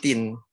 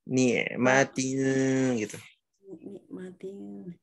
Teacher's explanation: Huruf N-nya samar-samar. Lidahnya, ujung lidah siap-siap digusi atau di pangkal gigi seri bagian atas. Siap-siap aja, jangan nempel. Ni'matin gitu.